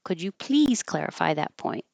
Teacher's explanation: That's a yes, no question. Goes up.